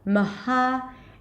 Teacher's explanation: The beginning syllable is super short, even in Arabic, so I'll definitely turn it into a schwa in English, maha, and then close it with another schwa at the end, Mohammed.